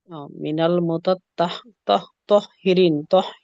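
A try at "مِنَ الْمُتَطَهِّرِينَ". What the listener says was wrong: তাহলে শব্দটা ছিল মূলত মুতাতাহ, মানে ওই হাঁটা দুইবার উচ্চারণ হবে। হ্যাঁ, মুতাতাহহিরিন।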